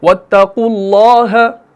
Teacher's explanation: اب اللہ کے لام میں اعلیٰ درجے کی تفخیم ہوتی ہے کیونکہ آگے پیش ہے